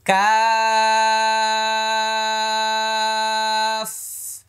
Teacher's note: শেষে ফা আছে, বাতাস হবে।